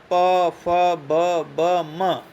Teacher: ओष्ठ्य व्यंजनों के उच्चारण में दोनों ओष्ठ परस्पर स्पर्श करते हैं आपस में तथा जीवा निष्क्रिय रहती है।